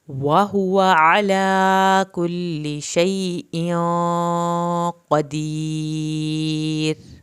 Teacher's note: रा पतला पढ़ा जाना है, पीछे साकिन हर्फ है और उसके पीछे ज़ेर वाला हर्फ आ गया है।